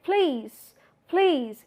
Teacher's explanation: what happens in please you are uh slightly putting up an aspiration